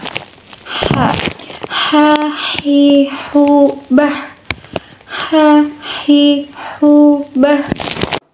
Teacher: dikeluarkan dari tengah tenggorokan kita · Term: huruf h